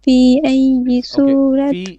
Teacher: في has 4 beats of mud here.